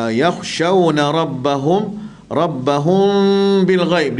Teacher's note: Kha di sini tebal, jangan melantun.